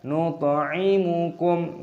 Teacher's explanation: huruf tha memiliki sukun, dibaca sebagai qalqalah. Pantulkan suaranya